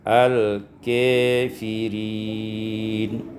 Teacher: imalatu fathatil kaf wal alif, dibaca imalah fathah kaf dan alif sehingga dibaca dengan al-kafirin.